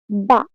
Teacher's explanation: দুই ঠোঁটের ভিত অংশ থেকে উচ্চারিত হয়